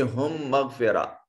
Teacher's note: پہلا میم ساکن دوسرا میم متحرک، پہلے میم کو دوسرے میم میں شامل کر دیا، یہ ادغام شفوی ہو گیا